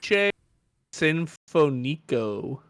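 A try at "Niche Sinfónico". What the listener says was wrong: You put the accent on the wrong. There's literally an accent above that. Niche Sinfonico. Yeah, that's what the little accent is, where you put the stress.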